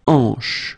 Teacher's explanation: H here is not pronounced, so you get the sound en, hanche at the beginning.